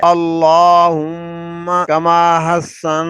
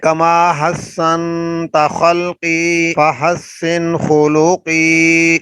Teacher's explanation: دوبارہ سنیے، اللہم، اللہ کو اوپر پڑھنا ہے، اللہم، میم پہ غنہ ہے، شد ہے، اللہم کما حسن، نون پہ اخفا ہے، غنہ کرنا ہے